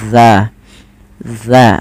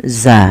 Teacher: Zal itu ujung lidah kita, ujung lidah menempel dengan gigi sari atas kita, maka za, za bukan za gitu ya.